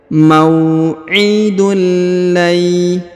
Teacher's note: Huruf nun sukun bertemu dengan ya. Ditahan dan ditekan, huruf nun sukunnya menghilang melebur ke huruf ya. Mau'idul lay, bukan lagi lan tapi lay ya, langsung ke huruf tanwin, huruf ya.